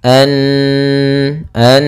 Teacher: ada mengenal sabdu misalkan maka Apabila ada nunharakat tasydid maka ia dibaca dengan bacaan gunah gunah yaitu menahan suaranya